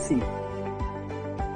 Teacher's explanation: Kalau sin, dia tak ada lidah keluar, gigi terapat.